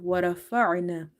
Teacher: ra is heavy because of having fatha on it